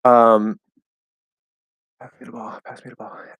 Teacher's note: the word the was pronounced with a flap D plus schwa